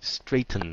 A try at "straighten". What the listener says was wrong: No, đừng có thình. Nghe thật kỹ nè, đúng rồi, straighten.